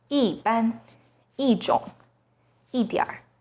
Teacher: When e is followed by a non-fourth tone, it becomes the fourth tone,